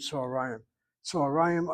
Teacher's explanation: You have a kamatz katan underneath the tzadi, you have a chataf kamatz underneath the hey, and then you have the accent over the second to last syllable. The patak, short vowel open, is accented